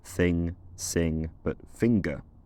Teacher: But in most English dialects the situation is more complicated, with ng occurring both with and without a g sound afterwards